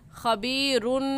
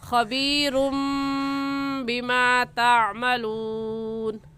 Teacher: सही है तनवीन को मीम के साथ मिलाकर पढ़ना, क्योंकि इक़लाब हो रहा है। खबीरुम बिमा तामलून।